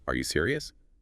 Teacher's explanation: If you say, Are you serious? flat. It barely sounds like a question